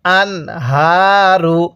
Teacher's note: এই যে এই নুন সাকিনটা স্পষ্ট করে পড়ব কেন? নুন সাকিনের পরে হা এই শব্দটা হলো ইজহার, অর্থাৎ হাটা ইজহারের হরফ। এই জন্য আমরা নুনটা স্পষ্ট করে পড়ছি